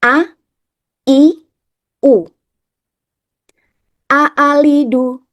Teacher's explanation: Untuk huruf hamzah yang berharakat dibaca dengan pita suara yang saling menjauh saat mengucap huruf hamzah berharakat. Jangan lupa mulut dibuka dan lidah dalam posisi beristirahat.